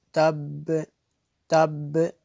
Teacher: آخر پہ با پہ قلقلہ ہوتا ہے، تو یہ مشدد ہے، تو یہ جماؤں کے ساتھ پڑھا جائے گا۔